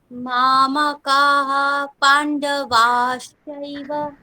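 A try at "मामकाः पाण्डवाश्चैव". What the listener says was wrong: ওখানে বিসর্গের জায়গায় ফকার উচ্চারণ করতে হবে, হকার বললে হবে না, কারণ পরে যদি পকার বা ফকার থাকে তাহলে আগের বিসর্গটা উপধ্মানীয় হয়ে যায়। উপধ্মানীয় মানে হচ্ছে একটা ফয় হলন্ত কল্পনা করে উচ্চারণ করতে হবে।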